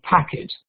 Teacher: the word packet, the stress on the first syllable